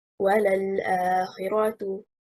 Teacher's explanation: The word وَلَلْآخِرَةُ, the first letter of the word وَلَل is a conjunctive waw, and the second letter is an emphatic lam. So the correct performance is stressing on harakatil waw.